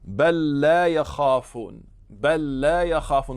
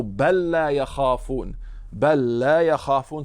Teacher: if after bel comes a word that starts with lam, you're going to make idgham of the last letter in bel with the first letter of the word after.